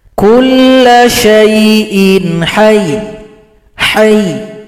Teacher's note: Kalau kita berhenti di sini, maka huruf ya yang tasydid kita sukunkan. Huruf ha tekan ke huruf ya ini.